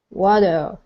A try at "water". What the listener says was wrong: Okay, so your T is sounding awesome. Okay, your R needs a little bit of work at the very end, but you're almost there.